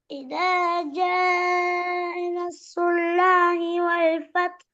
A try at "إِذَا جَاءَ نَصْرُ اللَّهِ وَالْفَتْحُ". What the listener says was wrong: நீட்டுங்க. இத ஜ நஸ்ருல்லாஹி.